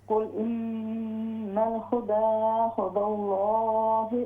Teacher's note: लाम को मोटा कीजिए